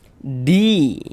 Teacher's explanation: Di kita baca panjang. Mad tabi'i panjang 2 harokat